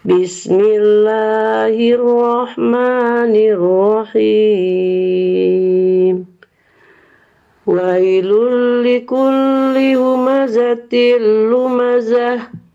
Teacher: ini sudah membentuk Irama Bayati naik datar turun